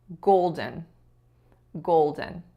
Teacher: we shouldn't be stressing the second syllable we should be stressing the first